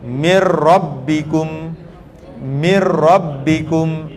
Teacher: kita masuk terus ke dalam huruf ro iaitu Mir mirbikum mirbikum dia masuk tanpa dengung tidak berdengung